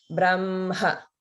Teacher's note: there should be a clear ha at the end.